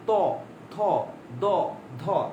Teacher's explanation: দাঁতের ঠিক পেছনে দেখবেন আমরা জিহ্বা ঠেকে দেখবেন ত থ দ ধ, এগুলো বলতে গেলে দাঁত লাগে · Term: দন্ত